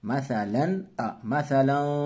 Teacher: یہاں غنہ نہیں ہوگا، تنوین کی آواز کو ظاہر کر کے پڑھیں گے۔ مثلا، مثلا، ایسے اخفا ناک سے نہیں پڑھیں گے۔